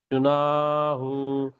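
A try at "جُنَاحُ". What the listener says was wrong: হু টান হবে না, জুনা, এই নাটা টান হবে, আলিফ মাদ্দা।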